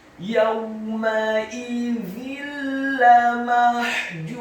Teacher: Ar-rabbihim yawma idzin lamahjubun, kata yawma idzin, huruf ya-nya dibaca tipis, fathah 1 harokat, huruf waw-nya dibaca sukun, dengan posisi mulut kita agak tertutup dan dengan gerakan yang agak cepat. Kemudian huruf mimnya dibaca tipis, fathah 1 harokat. · Huruf za-nya dibaca tipis, lidahnya agak keluar sedikit · Bertemu dengan huruf lam, hukum bacaannya adalah idgham bila gunnah, memasukkan dengan tanpa dengung